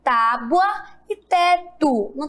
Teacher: Elas revelam o mesmo som, ou seja, a palavra tábua é escrita com U na segunda sílaba, tábua, com U. E a palavra teto é escrita com O. E possui o som de U. Olha aí, ó.